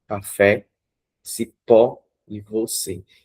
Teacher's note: Veja que a sílaba acentuada dá sempre na última. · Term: oxítonas